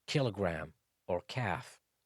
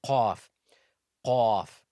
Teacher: Calf is pronounced from the back of the tongue, but actually closer to the mouth, opposite of the Qauf articulation point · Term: Kaaf